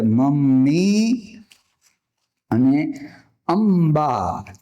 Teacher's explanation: અનુનાસિક પછી જો પ ફ બ ભ કે મ હોય તો એનું ઉચ્ચારણ તે મ થાય, મ વ્યંજન કરવાનું.